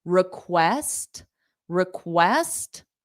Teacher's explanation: request, the syllable stress is on west. So this RE is unstressed.